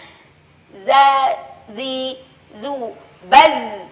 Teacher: Adapun zai tidak boleh beriringan dengan nafas. Jadi desis yang dihasilkan oleh huruf zai itu sendiri adalah murni tanpa adanya nafas. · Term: sofir